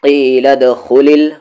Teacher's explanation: دال پر ساکن ہے، قلقلہ ہوگا